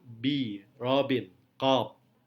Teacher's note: B adalah voice bilabial plosive.